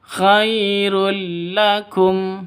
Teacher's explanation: Cara bacanya masuk ke lam tanpa dengung. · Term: idgham bila gunnah